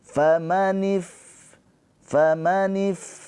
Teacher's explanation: fa sukun dia mempunyai sifat hames. Hames mengalir nafasnya.